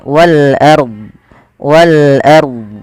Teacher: di sini rnya kita baca dengan bacaan ro tafkhim ro tafkhim ro tafkhim yaitu rnya dibaca dengan tebal · Ro tafkhim, yaitu ro-nya dibaca dengan tebal